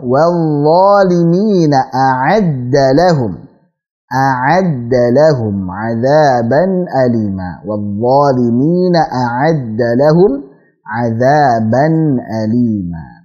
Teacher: alirkan dha-nya karena punya sifat rakhawah